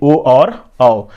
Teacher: कंठोष्ठ का अर्थ जहाँ कंठ भी और ओष्ठ दोनों के साथ उच्चारण हो, यानी ओ और औ, और इसे नाम क्या दिया गया है, तो कंठोष्ठीय वर्ण।